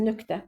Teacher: Əgər q samiti kar samitdən əvvəl gəlibsə, nöqtə k kimi tələffüz edirik.